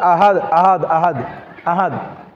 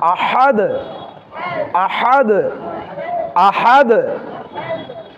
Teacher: কণ্ঠনালীকে চাপ দিয়ে হলকের মধ্যাংশ থেকে যেই হাটি উচ্চারণ হয় সেটি এখানে রয়েছে।